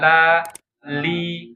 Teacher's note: udaranya suaranya keluar jadi ke samping itu inhirafnya huruf lam